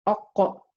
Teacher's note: qa comes from aqsa lisan, from the back of my tongue. So if I say aqqa and I remove it quickly from the articulation point, I say aqqa and I release it from the articulation point. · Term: qalqala